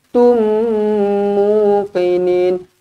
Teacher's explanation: Kena rapatkan bibir, dengungkan 2 harakat. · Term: mim sabdu